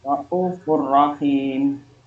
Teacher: Alasannya ada dhamma tanwin ketemu dengan huruf ro. Cara membacanya masuk tanpa dengung. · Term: idgham bila gunnah